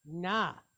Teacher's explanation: it's pointed with kamatz. So that's a long duration A type vowel, like AH, right?